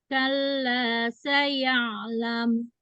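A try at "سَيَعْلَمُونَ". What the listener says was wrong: coba ketika domah itu monyongnya jangan ke atas tapi ke bawah. Mun, monyongnya ke bawah,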